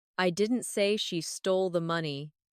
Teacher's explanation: First, emphasize the word I.